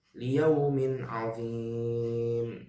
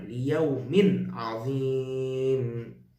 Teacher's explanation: Kasrah tanwin bertemu dengan a, liyaumin azim, izhar, tidak berdengung.